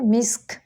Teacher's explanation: جب کاف کو ساکن کرنا ہوتا ہے تو کھے کی تھوڑی سی آواز نکالنی ہوتی ہے